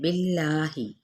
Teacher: جلالہ کا لام باریک پڑھا جائے گا پیچھے زیر کی وجہ سے